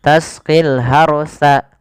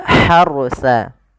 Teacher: Ini ha di sini ha kecil, jangan dibaca dengan ha besar, jangan tasqil harsa, tapi dia harusa. Huruf ha yang kecil itu dikeluarkan dari tenggorokan tengah. Tengah tenggorokan.